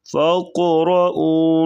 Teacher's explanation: قاف کو پر پڑھیں گے موٹا یہاں پر قلقلہ بھی کریں گے